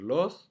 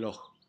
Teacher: se aspira esta consonante dejando una ja. Entonces en lugar de decir los, dicen loj.